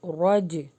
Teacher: را کو ہیوی کر کے جیم کے ساتھ ہم قلقلہ کریں گے